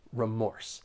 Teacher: When pronouncing this noun, there are two syllables and the stress is on that second syllable · When pronouncing this noun, there are 2 syllables and the stress is on that second syllable, remorse. Keep in mind that the first syllable is not stressed. Sometimes I hear people stress the first syllable and I hear that long E sound, like re, instead of a r, remorse.